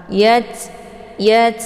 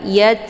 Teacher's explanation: ta sukun Ta ini merupakan huruf ataupun sifatnya Hamas ya jadi Hamas itu ada desis angin yang agak samarsamar